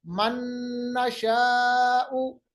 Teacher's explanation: मन नशा को हमने एक साथ मिलाया और मिलाने को हमने बिल्कुल वाज़ेह किया, आवाज को हम बांसे में ले आए, नाक के खैशूम में ले आए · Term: इदगाम